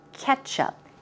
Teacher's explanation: Ketchup, the stress goes on the first syllable, and it's a e sound, ketchup.